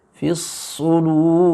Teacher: ra-nya terbaca dengan tebal, mumtali'an indal fam, ya, penuh, ya, mulut kita penuh